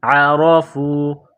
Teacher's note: عین کو گلے سے نکالیں گے ، عرفوا، را کے اوپر زبر ہے